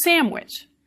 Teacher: Your lips come together. So the N has become an M so that it is also a bilabial sound next to the W, which is bilabial